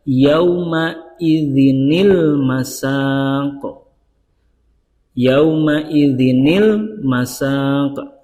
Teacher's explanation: Cara membacanya adalah yang asalnya tanwin atau harokat double itu menjadi harokat tunggal. Jadi asal yauma idzin menjadi yauma idzi.